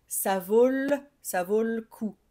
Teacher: On a tendance à parler vite. Donc le e, on a tendance à ne pas trop le prononcer.